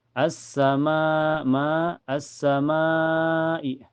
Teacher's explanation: Cara bacanya panjang bisa 4 sampai 5 harakat ya. Jadi hukumnya mad wajib muttasil.